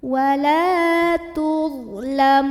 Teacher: huruf lam yang baris fathah kita panjangkan sepanjang 2 harokat saja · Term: mad tabi'i